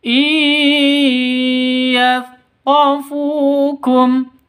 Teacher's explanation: Ya itu hurufnya idgham bi gunnah. Non mati bertemu dengan ya, idgham bi gunnah, masuk ke ya-nya disertai dengung.